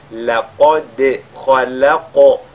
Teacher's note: la lettre dal qui est avec al-qalqala avant et le qaf qui est avec al-tafkhim